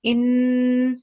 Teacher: we have noon mushaddat, so prolong the sound for 2 seconds.